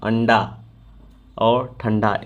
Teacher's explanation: ट, ठ, ड और ढ के पहले वाले अनुस्वार का उच्चारण कभी कभी न के समान होता है, जैसे टंटा का टंटा, अंडा और ठंडा।